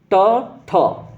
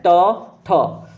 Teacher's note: जब आप ट ठ पढ़ते हैं तो आपकी जीभ जाके दांत के अंदर वाले मसूड़े के थोड़े से ऊपर टच होती है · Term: मूर्धन्य